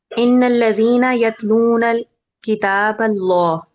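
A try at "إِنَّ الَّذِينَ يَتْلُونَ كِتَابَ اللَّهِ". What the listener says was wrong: यतलूना के आगे अल नहीं है। किताब अल्लाही। और ये जब हम बैतुल्ला से याद कर लें, बैतुल्लाही, अल बैतुल्ला नहीं कहते ना हम, बैतुल्ला से याद कर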